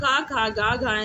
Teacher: क खा ग घ य कंठ ध्वनि के अंतर्गत माने जाते हैं